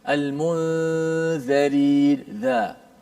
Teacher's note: Za dengan za benar makhrajnya sama daripada makhraj yang satu, iaitu hujung lidah di bawah gigi atas kita. Gigi atas ni letak di atas hujung lidah.